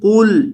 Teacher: قل، یہ جو ہمارے پاس پہلا لفظ ہے اس کے اندر قاف کو موٹا کریں گے۔ یہ جو قاف ہے دو نقطوں والا، اسے پر کیا جائے گا کیونکہ یہ ہمیشہ موٹا پڑا جاتا ہے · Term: قاف کو پر